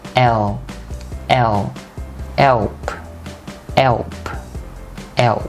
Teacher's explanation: Đọc chữ E xong bạn sẽ cong lưỡi chữ L lên, nói tạo thành âm L.